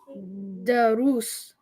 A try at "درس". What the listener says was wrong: There's a harak on the dal or no? There's no harak on the dal.